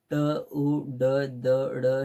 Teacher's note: मृधव्य व्यंजने तोंडातील मूर्धा स्थानाला जीभ चिकटून ज्या व्यंजनाचा उच्चार होतो त्यांना मृद्य म्हणतात